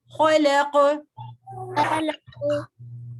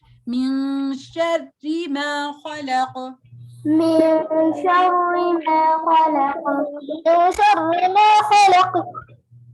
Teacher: خا کو موٹا کرنا ہے، قاف کی آواز کو موٹا کرنا ہے پر لام کو نہیں